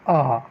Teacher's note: विवृत का अर्थ है कि पूरी तरह से जो मुख है वह गोले के आकार में या पूरी तरह से खुलना। आ को बोलने के लिए हमें मुख को अधिक खोलना पड़ता है, सबसे ज़्यादा खोलना पड़ता है।